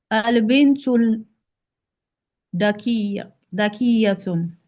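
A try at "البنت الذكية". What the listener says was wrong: It's not that. It looks like you said that, right? So, al-bintu dhakiyatu, not dhakiyatun. You know, the moment you had al-fallam, you don't put tanween anymore. Al-bintu dhakiya. al-bintu al-dhakiya. Al-bintu dhakiyatu.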